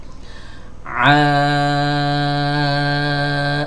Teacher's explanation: Ainnya hanya di awal saja. Selebihnya fathah yang dipanjangkan.